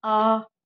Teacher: आ। जब हम बड़ा आ बोलेंगे तो हमारा मुंह पूरा खुल रहा है, तो वो विवृत हो गया। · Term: विवृत स्वर